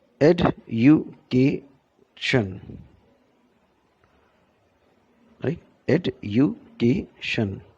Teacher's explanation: Many languages are syllable timed. Every syllable gets more or less the same stress or emphasis.